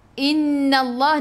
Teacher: nun ada sabdu, tekan ke dalam nun dan dengung 2 harakat wajibul gunnah